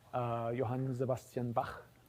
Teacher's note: Johann Sebastian Bach, his name ends with a velar fricative.